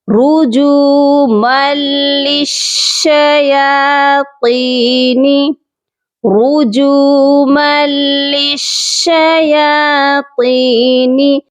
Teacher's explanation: ہم نے یہاں پر میم کو ڈائریکٹ لام مشدد کے ساتھ ملا دینا ہے، یعنی کہ صرف ادغام کرنا ہے.